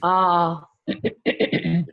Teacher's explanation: You have to stretch it for 2 units of time. Ah. Show the distinction between the short and the long vowel.